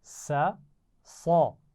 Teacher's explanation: سا کی آواز باریک ہے اور اس میں سیٹی نہیں ہے. شاباش. اور صاد کی آواز سیٹی ہے اور موٹی آواز بھی ہے